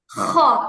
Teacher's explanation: হ্যাঁ চিবুকের নিচের দিকে যে অংশটা, গলার উপরের দিকে। খ, আর খ বলার সময় গলার মধ্যে একটা খসখস আওয়াজ হয়। খ, এটাই হচ্ছে হ খয়ের মূল হ পয়েন্ট।